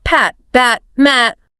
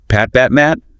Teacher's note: My lips press together exactly the same way for all 3. Exactly. Visually, on the lips, they are indistinguishable.